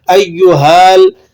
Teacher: ہا کو لام سے ملا کر ادا کریں گے، ہا کو الف سے نہیں پڑھا جائے گا